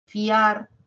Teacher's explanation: en fiar es un diptongo a pesar de que se escuchan dos porque la mayor fuerza de voz lo tiene la a